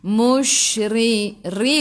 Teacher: ra baris bawah kena baca dengan nipis. Okey, tarqiq nama dia.